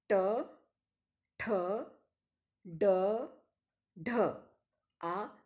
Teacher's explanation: the curled back tip of the tongue is the active articulator and the hinder part of the teeth ridge is a passive articulator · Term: retroflex sounds